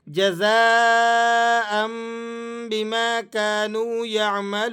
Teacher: جب تنوین کے بعد 2 زبر کی تنوین کے بعد آگے با آ جائے تو آپ نے یہاں پر اس کی آواز کو میم کے ساتھ چینج کر کے پڑھنا ہوتا ہے۔